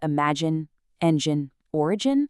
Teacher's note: The ending sounds much more like itch and imagine, engine, origin. They use a soft g and a very light in sound. These endings are always short and quick.